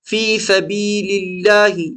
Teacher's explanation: اللہ کا نام باریک پڑھا جائے گا، یاد رکھیے کیونکہ اللہ کے نام سے پہلے زیر ہے.